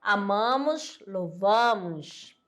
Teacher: o timbre da vogal a tônica é aberto naquele naquele caso e certas variantes do português Ó amamos louvarmos